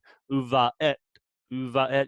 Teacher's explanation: It's like a stopping of the air in the middle of the word. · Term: glottal stops